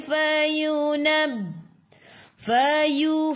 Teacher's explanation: gigi atas menyentuh perut bibir bawah. Nab. Tekan ke dalam ba ada sabdu. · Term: Fafifu